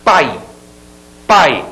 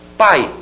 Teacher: esse som de A se escuta mais. O I é fraquinho, o I é um som fraquinho. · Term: vogal